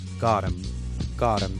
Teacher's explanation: What happens to got them is that he drops TH in them, okay? And what we have here is GOT plus EM. · Again, we have E, and because T is surrounded by O and E that are 2 vowel sounds, we change it into a D sound, and very simply, instead of got them, we say got 'em, got 'em.